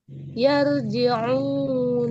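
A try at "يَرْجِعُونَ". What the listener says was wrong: Nah, itu masih yar. Coba tebelin. Yarji'una.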